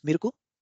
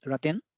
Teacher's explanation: all the L consonants have been replaced with r